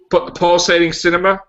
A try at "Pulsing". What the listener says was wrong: Pulsing, not pulsating. It's pulsing. Two syllables, not three.